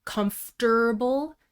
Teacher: In American English, we usually insert an er sound in the second syllable